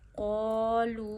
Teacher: قوف کو موٹا بھی کریے کیونکہ یہاں مستعلیہ کا حرف ہے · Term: قوف موٹا